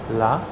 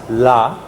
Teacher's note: the sides are open and the air goes around the tongue on the sides